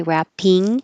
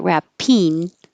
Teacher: Wrapping paper. Instead of ing with the back of your tongue going high, wrapping, you can make it wrapping with your tongue in the front, and that makes it a little easier to make the connection.